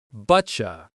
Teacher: First, but you is not said clearly. At fast speed it becomes butcha